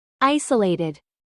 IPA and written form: ˈaɪsəˌleɪtɪd (ISOLATED)